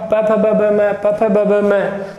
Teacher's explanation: प फ ब ब म का जब उच्चारण करते हैं तब एक होठ दूसरे होठ को स्पर्श करता है, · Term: स्पर्श व्यंजन